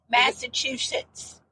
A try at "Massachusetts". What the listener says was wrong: Massachusetts. But you don't say it that slow. You say it all one word. Massachusetts.